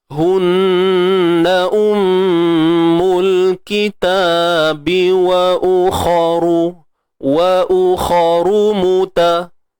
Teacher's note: kha tebal isti'ala, angkat pangkal lidah